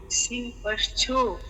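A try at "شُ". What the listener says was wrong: এ সিন না শিন শিন শিন পেশ সু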